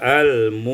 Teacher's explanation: Ayat 81, al-mu'minina ibdalul hamzatil wawan, ditukar hamzah itu dengan waw sehingga kita baca al-mu'minina